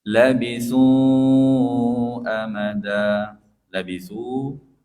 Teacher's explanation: empat harakat juga mad jaiz munfasil